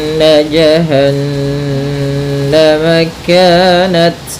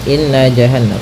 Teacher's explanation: kita menahan suara nunnya ya terlebih dahulu sepanjang dua harakat lebih sedikit ya kemudian baru kita baca J tidak boleh atau jangan dilangsungkan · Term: gunah